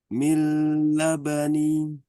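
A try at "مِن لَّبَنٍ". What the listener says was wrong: Nah, itu masih ditahan. Nggak perlu ditahan ya. Mil labanin Ini kan tanwin kan? Mil labanin atau mil laban.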